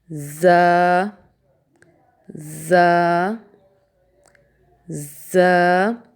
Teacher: نیچے کے دانتوں کے کناروں سے لگا کے ز ادا کیا جاتا ہے